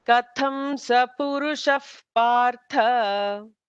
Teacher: When a visarga is followed by a pa, there is an F kind of a sound.